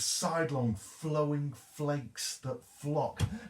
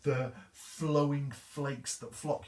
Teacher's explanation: Now notice those fl sounds. An F sound is a fricative. And the idea is that there's pressure there in the mouth, and it means that we have to linger over those phrases.